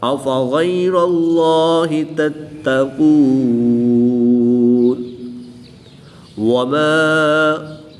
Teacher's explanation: غین قاف حرف مستعلیہ میں سے ہیں، ان کو پر یعنی موٹا پڑھیں گے